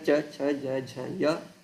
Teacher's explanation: तथा य श इति वर्णानां तालु इति स्थानं, ते सर्वेपि तालव्याः वर्णाः इति उच्यन्ते